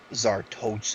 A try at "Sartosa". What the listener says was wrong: there's no z it's just star